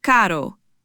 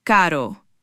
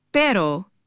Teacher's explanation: This isn't like the English R. It's a soft quick tap of the tongue against the roof of your mouth. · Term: single R